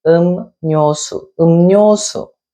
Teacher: So when the rieul initial follows a mieum batchim, like in this example, ryo, su, the rieul sound is nasalized to make a nieun sound